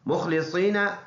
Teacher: مخلصین صاد موٹا خا بھی موٹا